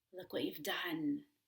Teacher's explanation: You've, with a short back U as in book.